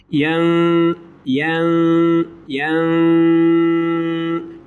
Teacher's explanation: İkisi de kalın yan yana gelmiş. Nun harfi ihfalı, sesi genizden getirecek şekilde okuyorum.